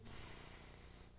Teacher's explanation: El sonido de la S se hace en el mismo lugar que se hace el sonido de la T. La única diferencia es que la lengua baja un poquito. Si decimos T, ustedes se dan cuenta, T, bajamos un poquito la lengua a los dientes y decimos así.